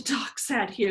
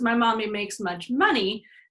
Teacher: there's a lot of nasal sounds in that so there should be a lot of nasal airflow